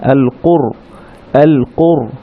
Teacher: এই কু সাউন্ডটা গিয়ে র সাকিনকে ধরবে, র এর উপরে যেহেতু সাকিন আছে, আল কুর, আল কুর। র সাকিনের আগে যেহেতু দম্মা আছে সেজন্য রটা একটু মোটা হবে, ভারী ধরনের হবে